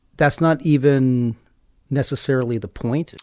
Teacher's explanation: I've identified a thought group. For me, the pause is occurring after even.